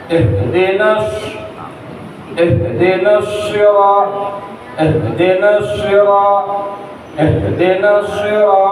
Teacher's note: Nun ada alif Pak, ada tanda panjang. Dikarenakan di shadnya itu ada tasdid maka alifnya itu dianggap enggak ada, Pak. Jadi dari nun dimasukkan ke shad.